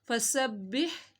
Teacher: یہاں پہ کوئی لفظ لمبا نہیں ہو رہا، با کو 2 دفعہ پڑھا جائے گا